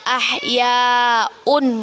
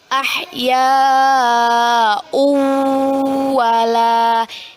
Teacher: tanwin bertemu dengan huruf wow hukum bacaannya ialah Idgham Bighunnah kita baca dengan memasukkan bacaan tanwin ke dalam huruf wow